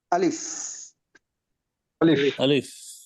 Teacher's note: লাস্টে যেন উপরের দাঁত নিচের ঠোঁটের সাথে লেগে একটা সফটলি বাতাস বের হয়